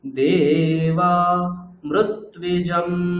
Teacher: দেবা, দে নিচে, বা উপরে, আবার মৃ, হ্যাঁ নিচে।